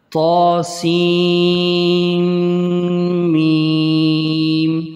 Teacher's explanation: سین کو میم کے ساتھ ملانا ہے